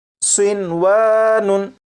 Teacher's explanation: होना तो ये चाहिए था कि नून साकिन को वाव में इदगाम करते, लेकिन नून साकिन और वाव क्योंकि एक लफ्ज़ में इकट्ठे हैं इसलिए यहाँ पर इदगाम नहीं करेंगे और इसे पढ़ेंगे सिनवानुन।